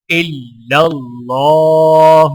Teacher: اللہ کے لام کو کھڑے زبر کی وجہ سے ایک الف کے برابر کھینچ کر پڑھا جائے گا اور لام کو موٹا پڑھا جائے گا